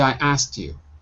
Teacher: we don't say i asked you we say i asked you we dropped a k so it sounds like a dirty word